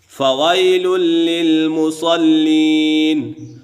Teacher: فویل للمصلین، فویل للمصلین، یہاں پر یالین ہے اور اس کے بعد لام دو پیش لن اور لام زیر لی، یہ دونوں لام باریک ہیں اسی وجہ سے منہ اور آواز کھول کر ادا ہوں گے۔ فوائل للمصلین، اگلا لام تیسرا لام بھی باریک ہے۔